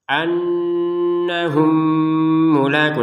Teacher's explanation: mim sukun bertemu mim, maka masukin mim pertama kepada mim yang kedua sehingga terbacanya mim yang kedua ini tasydid ya. Setelah itu jangan cara dibacanya langsung dengungan.